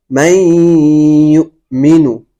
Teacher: ادغام بالغنے کی مثال جیسے من یؤمنو، اب نون ساکن ہے، نون ساکن کے بعد حروف یرملون میں سے یا آ رہا ہے، یؤمنو کے اندر یا آ رہا ہے، تو یہاں نون ساکن کو بعد والے حرف سے ملا دیا جائے گا اور ادغام بالغنہ ہوگا، ادغام غنے کے ساتھ ہوگا